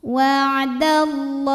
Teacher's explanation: Lam jalalah dibunyikan secara tafkhim karena huruf sebelumnya berbaris fathah, maka dibacanya tebal.